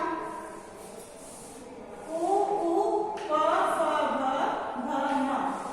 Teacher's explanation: इसका उच्चारण स्थान है ओष्ठ। ओष्ठ बोलते हैं होठों को।